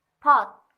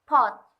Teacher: Ketika kita berkata pot, akan terdengar sedikit ada ledakan atau kita mengeluarkan udara dari mulut kita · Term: aspirated